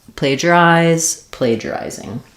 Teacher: So we have first syllable stress.